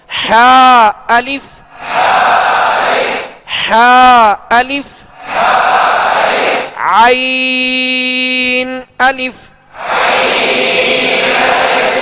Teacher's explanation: حا اور عین کا ایک ہی مخرج ہے، یعنی درمیان حلق سے ادا ہوتے ہیں